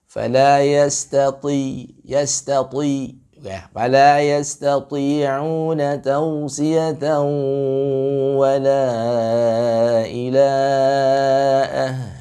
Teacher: itu huruf ta-nya tetap dia isti'la walaupun berbaris kasrah. Ya, tapi memang porsinya tidak sebesar ketika huruf ta ini berbaris fathah atau dhammah.